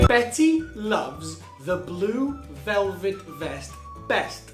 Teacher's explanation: the V sound uses the same mouth position as the F sound, except with F, the sound is produced by the air coming out at the lips, and the V sound is produced in the throat.